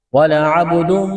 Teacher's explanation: با ساکن ہے، با پر قلقلہ کریں گے